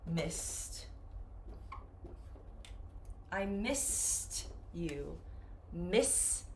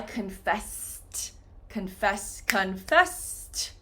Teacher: anytime you have the regular verb and an ED, this ED is going to sound like this T sound